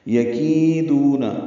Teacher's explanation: یکیدون پہلا اور آخری حرف جلدی پڑھنے ہیں، کی یا مدہ اور دو واو مدہ ہے، دو حرکات لمبے کرنے ہیں. کیدا یا لین ہے، ہونٹوں کو پیچھے کھینچیں گے، نرمی سے پڑھیں گے.